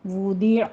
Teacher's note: پڑھنا ہے، زبان کی کروٹ اوپر دانوں کے ساتھ لگائیے، وودیع، عین وسط حلق سے ادا کریں گے